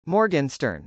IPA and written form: mˈɔrgɪnstɚn (morgenstern)